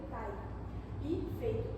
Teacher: quando pronunciamos essa palavra pai, podemos ver que o I ele vai ficar um pouco mais fraco, porque está ao lado de outra vogal. Então, vai ser assim uma transformação em semivogal glide.